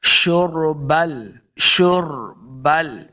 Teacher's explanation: شین کو جب پڑھیں گے سیٹی کی آواز آئے گی، را ساکن ہے، را کو پر پڑھنا ہے، شربل حمیم، ہا کو حلق کے نچلے والے حصے سے ادا کرنا ہے، تب ہا کا مخرج صحیح ادا ہوگا۔